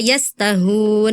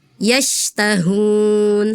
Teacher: Huruf shin yang titik 3 tebal, hati-hati terdengarnya tadi seperti sa ya. Shin itu makhrajnya dari tengah lidah